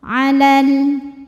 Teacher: Kalau wasal lamnya tetap pendek, gugur madnya. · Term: taklus bilfi